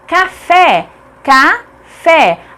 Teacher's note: A última sílaba fé é tônica, portanto é acentuada porque é uma oxítona terminada em E.